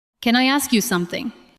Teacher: The words can, I, and ask move together.